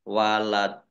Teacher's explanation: karena Dal sukun maka menjadi qolqolah dibaca qolqolah atau memantul